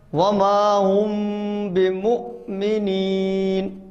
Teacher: میم کو حمزہ سے ملانا ہے